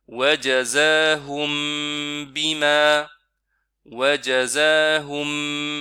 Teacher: On reste un peu plus longtemps sur mim. Et puis on entre directement sur B. On ne lit pas en 2 temps. On ne dit pas wajazahum bima. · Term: ikhfa